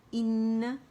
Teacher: حمزہ اقص الحلق سے ادا ہوگا، باریک ہے، انگلش لیٹر ای کی ساؤنڈ دے گا. انا نہیں پڑھیں گے، ای کی ساؤنڈ دے گا اور زیادہ نیچے بھی نہیں جائے گا کہ یہ مد بنے.